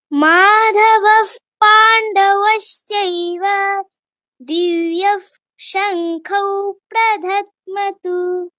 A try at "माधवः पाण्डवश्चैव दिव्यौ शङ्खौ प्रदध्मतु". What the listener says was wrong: প্রধাদ্ম, প্রদা, দটা আগে। আর দিব্যর পরে তো বিসর্গ নেই, তুমি দিব্য বলছো কেন? দিব্যৌ শঙ্খৌ, নরমাল দিব্যৌ শঙ্খৌ।